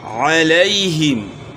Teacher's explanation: عین کی آواز گلے کے درمیان سے، ہا کی آواز گلے کے آخر سے